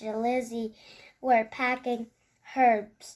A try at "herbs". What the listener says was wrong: Herbs. No, herbs. That is silent H. Right, Daddy? Herbs is silent H. Herbs.